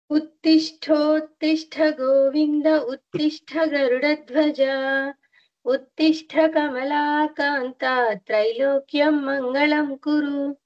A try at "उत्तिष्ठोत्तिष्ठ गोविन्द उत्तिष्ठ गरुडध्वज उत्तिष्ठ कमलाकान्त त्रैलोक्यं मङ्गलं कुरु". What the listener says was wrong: There is no long vowel for Kanta Ji. Kanta. Short vowel.